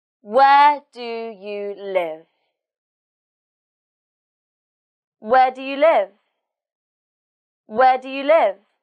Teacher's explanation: in this question the stress is on where and live and because it's a wh question the pitch goes down at the end